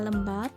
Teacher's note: lembab diucapkan dengan lem, lebih panjang daripada bab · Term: Durasi